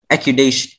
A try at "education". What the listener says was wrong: Education. Accudation. Education. The C and the D. Education.